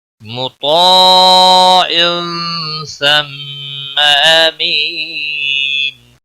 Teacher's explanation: ثم میم مشدد پر گنہ ہوگا، گنہ کی مقدار ایک الف کے برابر ہوتی